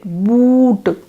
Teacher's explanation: The lips are being rounded, boot. Yes.